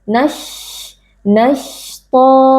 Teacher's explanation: Karena huruf shin keluar dari wasatul lisan, bagian tengah dari lidah kita. Jadi, bagian tengah lidah terangkat ke langit-langit atas, sedangkan bibir kita tetap dalam kondisi yang normal.